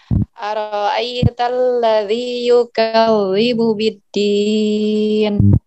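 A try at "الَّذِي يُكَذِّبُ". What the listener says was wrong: Nah, di bagian zalnya jangan dibaca seperti ini. Yukawi. Jadi sebibirnya jangan diangkat ke atas. Jangan yukawi. Tapi yukazi. Jadi ketika kasroh itu bibir bawah kita tuh harus naik ke bawah, harus turun ke bawah. Yukazi. Jadi bukan naik ke atas.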